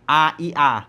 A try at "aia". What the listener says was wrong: Jangan dieja satu-satu dong. Bacanya Aiya.